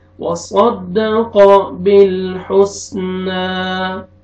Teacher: सौद को मोटा करके पढ़ेंगे, क़ाफ को भी मोटा करके पढ़ेंगे